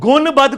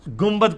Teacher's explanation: نون ساکن کے بعد جب کبھی بھی با آ جائے تو وہ میم سے بدل جاتا ہے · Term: اقلاب